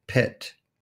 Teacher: we have high, front, lax, unrounded I, as in pit.